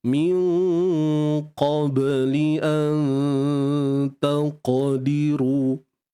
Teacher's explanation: Di baris bawah satu harakat, ru tebal, ma asli dua harakat. Ra baris depan tu kita kena tebalkan.